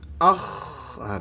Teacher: sifatnya istifal pangkal lidahnya tidak terangkat